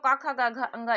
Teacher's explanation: ख का उच्चारण स्थान कंठ से है तो क ख ग घ ये कंठ से है